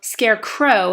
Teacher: scarecrow has the OW sounding like a long O